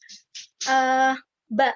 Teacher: Pertemuan antara dua bibir ya. Bibir atas dan bibir bawah. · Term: huruf ba